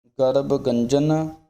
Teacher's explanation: ਯਾਨੀ ਕਿ ਬੱਬੇ ਦੀ ਹੀ ਆਵਾਜ਼ ਆਵੇ, ਭੱਬਾ ਨਾ ਬੋਲਿਆ ਜਾਵੇ।